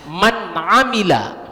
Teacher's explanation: Man amila misalnya, man amila, nun sukunnya itu dijelaskan. Man amila, jangan didengungkan. Man amila. Atau kadang kita sambil berpikir man amila, itu salah. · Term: izhar